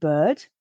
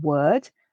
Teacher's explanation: this er sound particularly helps characterize many english from england accents because that letter r is not pronounced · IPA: /ɜ:/